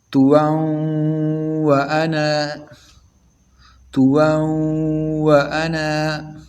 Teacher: واو جب واو کے ساتھ ملائیں گے تو غنہ بھی کریں گے اور پہلے والے لفظ میں بھی غنہ کریں گے توا وانا توا وانا۔